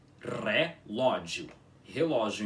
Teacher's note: Relógio em balborano com o R enrolado